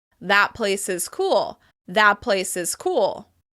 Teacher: the lips. "That place is cool" becomes "thap place is cool." Rather than tap the /t/ sound inside the mouth, we move the sound to the lips instead